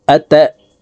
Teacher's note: এই নুন তাসদিদওয়ালা নুনের সাথে নাকের বাঁশি থেকে তিন সেকেন্ড পরিমাণ গুন্নাহ করে ধরে রাখবো এই গুন্নাহকে ওয়াজিব গুন্নাহ বলা